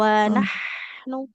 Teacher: ada huruf H yang harus dialirkan dulu nafas dan suaranya